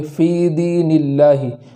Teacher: لام ہے کلمہ جلالت کا، اس کو باریک پڑھیں گے، اس لیے کہ اس سے پہلے زیر ہے۔ اس طریقے سے پڑھیں گے فی دین اللہ، فی دین اللہ نہیں پڑھیں گے۔